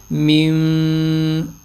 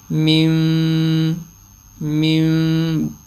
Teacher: غنّہ کرتے ہوئے اقلاب کی میم میں نرمی اور دونوں ہونٹوں کے ملنے میں ہلکا سا فاصلہ ہوگا، جیسے میم، یہ ہلکا سا بالکل دونوں کے، یعنی پورا اس طرح نہیں ملائیں گے، نارمل سے ملائیں گے، جو ہلکا سا فاصلہ خود بخود ہی آ جاتا ہے۔ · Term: اقلاب کا غنّہ